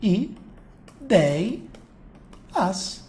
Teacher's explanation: E eu tenho nela um ditongo aberto. Só que a tônica está na penúltima, então eu tenho uma paroxítona.